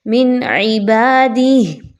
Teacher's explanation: تنوین کی آواز کو بڑا کلیئر پڑھنا ہے، ود آؤٹ غنہ پڑھنا ہے، من عبادہ، گول ہا ہے اور اس کے نیچے کھڑی زیر ہے۔